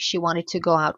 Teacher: liaison entre go et out, W invisible